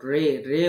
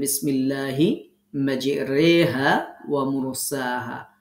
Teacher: এমালাটা হচ্ছে এটা আলিফ এবং ইয়া এর মাঝামাঝি উচ্চারণ হবে। হ্যাঁ, আমরা এখানে মেজ রখড়া যে রি হওয়ার কথা, কিন্তু এখানে রি না হয়ে আমরা রে পড়ব, রে রে উচ্চারণ করব।